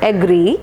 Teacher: Stress is marked on the second syllable